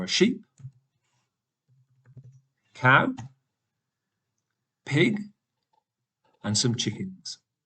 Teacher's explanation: And when you're speaking, you can hear that my voice is going up.